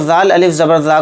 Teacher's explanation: ذا کو یہاں پر تھوڑا کھینچیں گے یعنی ایک الف کی مقدار